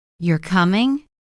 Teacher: But if I say, "You're coming," rising tone, it becomes a question I'm not sure, I'm asking. Same words, completely different meaning just from tone.